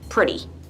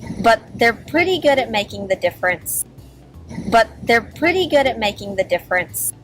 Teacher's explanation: notice how I pronounce pretty like it's spelled with a D instead of a T